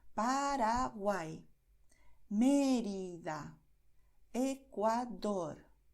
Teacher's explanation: la diferencia es que la lengua es más rápida y hay menos contacto. Solo usamos realmente la puntita de la lengua.